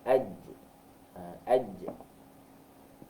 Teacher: huruf jim, kita mempertemukan tengah lidah dengan lelangit atas kita